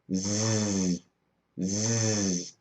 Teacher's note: when I make a z sound Z my throat begins to vibrate you can think of s and Z as twins they are